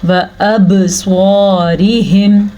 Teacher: रा बारीक पड़ी जाएगी, रा के नीचे ज़ेर है इसलिए